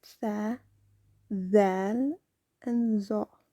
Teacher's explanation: these originate when the tip of the tongue touches the edge of the upper two front teeth